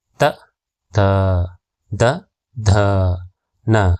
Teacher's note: ಈ ಅಕ್ಷರಗಳು ಹಲ್ಲುಗಳ ಸಹಾಯದಿಂದ ಅಂದರೆ ನಾಲಿಗೆಯು ಹಲ್ಲುಗಳಿಗೆ ತಾಗುವುದರಿಂದ ಹುಟ್ಟುತ್ತವೆ. ಹಾಗಾಗಿ ಇವುಗಳನ್ನು ದಂತ್ಯಕ್ಷರಗಳು ಎನ್ನುವರು.